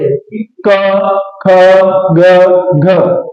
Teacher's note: ध्यान देना, हमने एक श्लोक जरूर पढ़ा, अकु विसर्जिया नाम कंठा, कि जो कवर्ग वाली, जो वर्ग का प्रथम वर्ग है कवर्ग, उसमें जो ध्वनियां निकलती हैं वो कंठ से निकलती हैं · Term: कंठ ध्वनियां